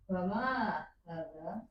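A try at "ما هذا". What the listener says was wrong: Ma-nya dipanjangi.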